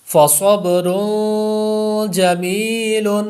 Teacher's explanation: اکفا ہے اس لیے غنہ کر دیا